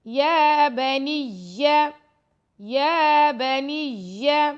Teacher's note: یا پر کھڑا زبر ہے, یا کو لمبا کر رہے ہیں 2 سیکنڈ